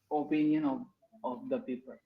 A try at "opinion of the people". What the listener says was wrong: don't say off first sound is not coming at all we are reducing that sound